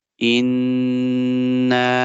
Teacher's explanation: Hamza goes to noon in, and but there is shadda, so we will do ghunna.